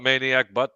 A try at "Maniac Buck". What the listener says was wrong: Maniac Buck, not Butts. I think you said Butt. Sound like you said butt.